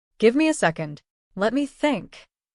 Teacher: This sentence has 2 short ideas. Pause briefly after, give me a second. Then continue naturally.